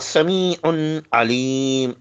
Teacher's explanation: عین دونوں حلق سے پڑھے جائیں گے، عین پر تنوین پڑھی جائیں گی.